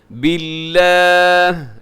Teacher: یہاں لفظ اللہ باریک رکھیے گا کیونکہ لفظ اللہ کی لام سے پہلے با کے نیچے زیر ہے